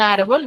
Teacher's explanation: Y lo mismo sucede con árbol, donde su mayor fuerza de voz está en ar, y la tildo porque termina en L.